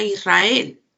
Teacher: en israel hay una vibrante múltiple